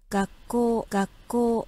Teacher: Sans passer par le nez, parce que le ga est placé en début de phrase.